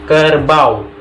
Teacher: Kita dapat merasakan perubahan warna bunyi huruf A dan U pada kata kerbau ke arah bunyi semivokal W. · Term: diftong